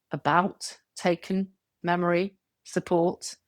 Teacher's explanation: The vowels look different, but they reduce in the same way because they are unstressed. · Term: schwa sound